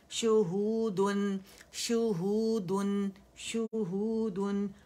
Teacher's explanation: شین کے مخرج پہ جائیں گے وسط اللسان میں